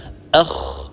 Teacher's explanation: إذا الخاء تخرج من أدنى الحلق، أدنى الحلق ما هو؟ هو منطقة جذر اللسان مع الحنك اللحمي. · الخاء أول شيء هي حرف مهموس. ما معنى مهموس؟ يعني يتدفق النفس عند النطق بها